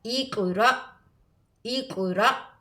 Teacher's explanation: الف کے اوپر اگر حمزہ کے اوپر جزم ہو تو اس کو جھٹکا دے کر پڑھیں گے